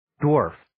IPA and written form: dwɔːrf (Dwarf)